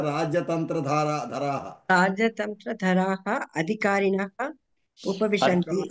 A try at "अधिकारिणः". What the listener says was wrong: अत्र अधि इति नास्ति, अधि इति द्वितीयवर्णः, चतुर्थवर्णः लेखनीयः. अधिकारिणः